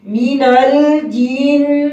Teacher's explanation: نون مشدد ہے یہاں غنہ ہوگا ایک الف کے مقدار